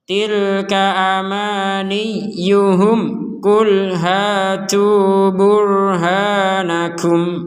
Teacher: Hum ku, jadi antara hum dan ku ini disambung langsung